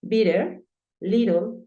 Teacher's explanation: la doble T puede sonar como una R en algunos casos